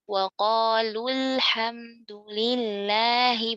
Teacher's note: Terakhir, 'waw' tidak dibaca, tidak dipanjangkan. Kata 'mad' ( pemanjangan) dihilangkan secara fonetik, dihapus dalam pengucapan.